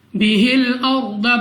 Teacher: रॉ साकिन से पहले जबर तो रॉ को पुर यानी मोटा पढ़ेंगे और क़वाद को भी मोटा पढ़ेंगे क्योंकि मुस्तालिया में से है।